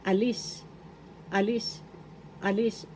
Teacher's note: The accent is in the second syllable.